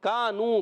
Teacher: کاف الف زبر کا الف مدہ ایک الف کھینچ کر ادا کریں گے. نو واو مدہ ہے، اس کو بھی ایک الف کھینچنا ہے.